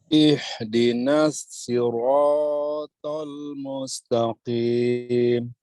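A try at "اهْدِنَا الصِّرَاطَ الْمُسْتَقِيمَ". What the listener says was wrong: Baik, jiddan. Masya Allah.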